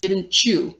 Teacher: So didn't and you, right? The T and the Y end up becoming a ch sound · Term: Palatalization